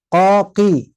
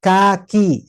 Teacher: huruf qafnya jangan sampai sama dengan kaf. Tetap pangkal lidahnya lebih ke belakang.